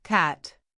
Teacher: the sound in cat isn't short and flat. It's pronounced with an open mouth.